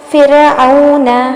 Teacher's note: را ساکن ہے فا کے بعد والا، اور فا کے نیچے جو کسرہ ہے نا یہ اصلی ہے تو باریک پڑھیں گے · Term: را کی ترقیق